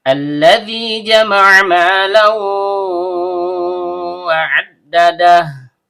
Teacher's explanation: Terdapat hamzah wasl yang terbaca a karena kita ibtida atau memulai bacaan. Tapi sekiranya kita lanjut dari ayat sebelumnya, maka di sini terjadi nun wiqayah atau nun wasl.